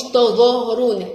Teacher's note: والظاء من الحروف اللي بنطلع فيها طرف اللسان